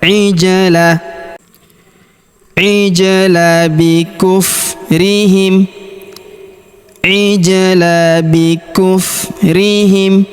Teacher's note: Alifnya tidak dibaca. ijlah huruf ja berharakat sukun kita pantulkan atau kita qalqalahkan.